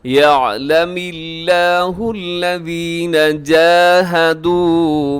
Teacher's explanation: یعلم اللہ الذین جاہدوا، یہاں لفظ اللہ اب باریک رکھیے گا، اس سے پہلے میم کے نیچے زیر ہے تو لفظ اللہ کو باریک رکھیے گا۔